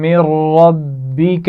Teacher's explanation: من ربک جزاء میم پر غنہ ہو رہا ہے اور من ربک را کو موٹا پڑا جائے گا اور ربک با پر بھی تشدید ہے تو اس کو بھی سختی سے پڑھا جائے گا